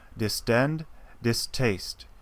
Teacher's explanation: The T has no symbol, but here for distaste, the T is aspirated, and you can hear it.